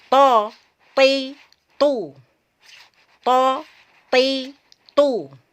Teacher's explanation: dikumpulkan kedua bibir ke depan sehingga bunyinya menjadi tu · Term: Tebal